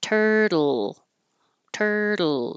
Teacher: the front of my tongue can stay here while the sides of my tongue come down to let the air out for the L. So when you make oh, the air comes out the sides. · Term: syllabic L